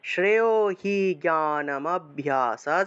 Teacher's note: জ্ঞানম অভ্যাস একসাথে বলতে হবে এই দুইটা শব্দ একসাথে বলতে হবে